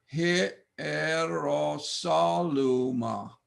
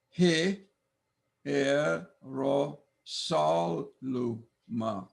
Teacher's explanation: We pronounce this word Hierosaluma. Notice no diphthong.